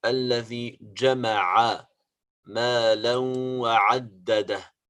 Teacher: we have to clear up the letter ain that is coming from the throat